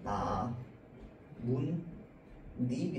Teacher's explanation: 이 니은과 니은이 합쳐져 가지고 니은 첨가다 라고 이야기를 합니다